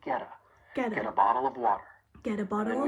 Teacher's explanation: that final T in get, because it comes between two vowel sounds, I am going to pronounce it as, you guessed it, a flap T. And then I can link that soft sound with the article and it's going to sound like get a bottle of water.